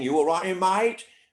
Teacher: if your voice goes up at the end of the sentence like the aussies do that is tune two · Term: tune 2